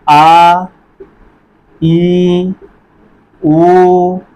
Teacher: समय थोड़ा सा ज़्यादा लगे, 2 मात्रा काल का समय लगा। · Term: दीर्घ स्वर